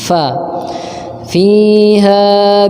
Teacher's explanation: gigi seri atas nempel ke bibir bawah bagian dalam